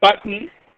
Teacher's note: in the second syllable, a consonant has been shown as the nucleus of the second syllable